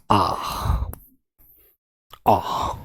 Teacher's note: आ, जब सुई अंदर लग जाती है नस में, तो आवाज कैसी आती है यहां से, जब नस में सुई लग जाती है, आ आती है ना। तो आ की जो आवाज होती है ना मेरे प्यारे बच्चों, वो विवृत स्वर होती है